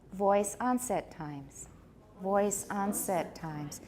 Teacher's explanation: And then voice is going to be stressed no matter what. 最左边的绝对是有重音，无论如何，左边的那个是有重音，那个是没有任何好怀疑的.